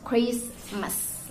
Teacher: Okay, then the compound word is like in the Christmas. We do not need to pronounce the T behind the Christmas word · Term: deletion